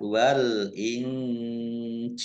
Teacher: dua harakat Wal Injil alif lam Qariah ditandai lamnya dibaca sukun nun sukun bertemu dengan huruf Jim bacaan ikhfa dibaca samar-samar